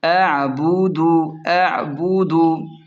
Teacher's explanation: عین کو حلق سے نرمی کے ساتھ نکالیں